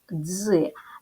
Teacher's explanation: дві букви д і з позначають один звук приголосний твердий ДЗ